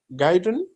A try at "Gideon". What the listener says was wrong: Gideon. said like Gideon. It is not Guy.